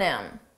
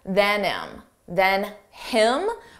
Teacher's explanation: you don't hear the H on him